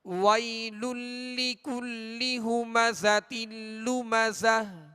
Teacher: یہاں یا لین ہوگی، اس کو نرمی کے ساتھ بغیر کھینچے بغیر جھٹکا دیے معروف طریقے سے ادا کریں گے